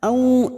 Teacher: fathah bertemu sukun Huruf layin kita lunakkan